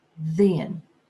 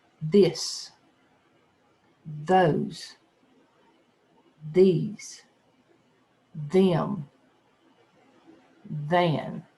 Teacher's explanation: In the words there and the, we make the voice of TH, the. When we make this sound, our vocal cords vibrate as our tongue extends between the upper and lower teeth.